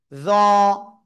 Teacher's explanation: জিহ্বার আগা উপরে দুই দাঁতের আগায় লাগাবেন, লাগিয়ে একটু মোটা আওয়াজে উচ্চারণ করবেন